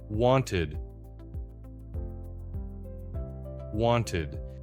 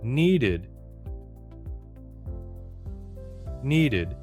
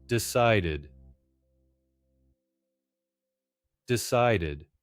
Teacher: Now the id ending. 2 syllables. Slow down and add the vowel. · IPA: /ɪd/